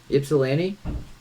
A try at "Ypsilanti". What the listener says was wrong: Very close. YPSILANTI. It's just Ypsilanti. There's no y sound. Just Ypsilanti.